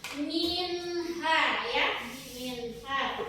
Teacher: Nun mati bertemu ha, jadi dibaca jelas, tidak ada dengungnya. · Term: izhar